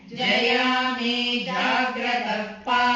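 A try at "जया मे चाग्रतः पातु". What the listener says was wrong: Chagrata, not Jagrata. Cha agra is Chagrata. Jaya me Chagratah Padu. Jaya me Chagratah Padu. Jaya me Chagratah Padu.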